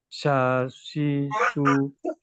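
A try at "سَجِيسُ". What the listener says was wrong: Maaf, Pak. Yang ini huruf jim, Pak.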